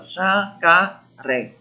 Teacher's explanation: Então, a última sílaba aqui é a mais forte. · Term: oxítona